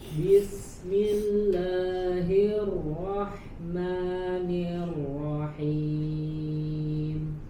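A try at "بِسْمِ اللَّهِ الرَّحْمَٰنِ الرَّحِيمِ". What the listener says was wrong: Agak lebih disamarkan sedikit huruf ro-nya. Bismillahirrahmanirrahim.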